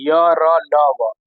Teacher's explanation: यह सभी चारों व्यंजन सघोष अल्पप्राण होते हैं।